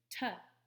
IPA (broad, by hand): t